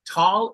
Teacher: Tall is an open sound. You open your mouth and say ah. Và cái âm của hàng thứ ba là âm của letter A.